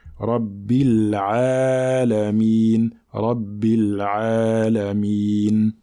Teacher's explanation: il faut bien prolonger le ayn, car nous avons sur le ayn un petit alif qui sert à prolonger la lettre, d'accord? Donc qui sert à la prolonger de 2 temps, d'accord?